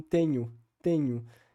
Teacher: gente sabe que no português brasileiro e também no português europeu a tendência é também o alçamento dessa vogal ou seja o fechamento dessa vogal para vogal u